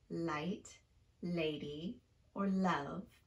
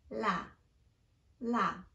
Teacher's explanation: it has a light sounding quality because the tongue is lifted and touching the back of the upper front teeth